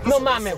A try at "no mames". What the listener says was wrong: Primero tienes que pronunciar la S, no mames. Porque si no, si lo pronuncias como sudamericano, no mames.